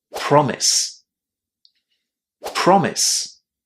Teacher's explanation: we put the stress on the first syllable and we say promise.